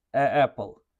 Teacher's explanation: Apple degan paytimizda ikkita a o'rtasida majburiy tarzda pavuza saqlaymiz va mana bu yerdagi tovush paychalarini qisishga majbur qilamiz o'zimizni. Tovish paychalarimizni qisamiz o'zimizni majburlaymiz.